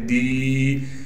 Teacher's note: آگے یائی مدہ سے ملا دیں گے، دال یا زیر دی، مدہ ہونے کی وجہ سے دال کو ایک الف کے مقدار کھینچیں گے